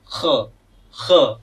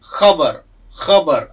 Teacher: क ख ग घ यांना आपण कंठे म्हणतो, तर या कंठेच्याही आतून आवाज याचा आला पाहिजे